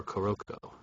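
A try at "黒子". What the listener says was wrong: No, it's just Kuroko. You said one syllable.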